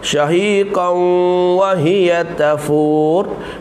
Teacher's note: Shahiqan tanwin bertemu dengan waw idgham bi gunnah. Idgham maknanya masukkan beserta dengan dengung.